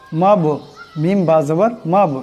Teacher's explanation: মাব, মিম বা জবর মাব, এখানে বা সাকিন, এই বা কলকলা হরফ, আওয়াজটিতে টক্কর খাবে